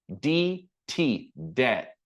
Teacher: No B is pronounced. It's never debted. It's debt.